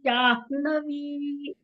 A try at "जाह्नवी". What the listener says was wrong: First na ಬರಬೇಕು. Afterwards ha. ಜಾಹ್ನವಿ.